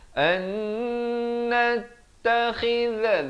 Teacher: nun mati bertemu nun, wajibul idgham bi gunnah, masuk beserta dengan dua harakat